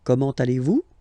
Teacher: it's a question, so raise a little bit your voice at the end